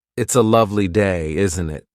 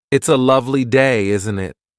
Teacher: Notice the upward tone at the end of, isn't it?